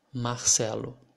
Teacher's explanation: in my accent i pronounce this r like the letter h in in english in words like hospital or hotel it's more like an aspiration